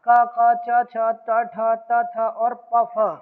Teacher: प्रत्येक वर्ग का जो पहला और दूसरा वर्ण होगा वो सब क्या होगा, अघोष होगा।